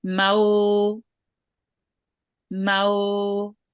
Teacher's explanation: we'll join on the meme onto the waw and make it long for 2 counts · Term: waw leen